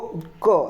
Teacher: વોઇસલેસ એટલે કે અઘોષ એટલે કે કંપન ન કરતું. તો ક અથવા તો કે એક અઘોષ કોમળ તાલવ્ય જે કે તાળવાનો જે કોમળ ભાગ છે ત્યાં સ્પર્શ થઈને ઉચ્ચારણ થાય છે, વિસ્ફોટક ધ્વનિ છે. અને કેવી ધ્વનિ છે આ કે તો વોઇસલેસ વેલર પ્લોઝિવ એટલે કે અઘોષ કોમળ તાલવ્ય વિસ્ફોટક ધ્વનિ છે.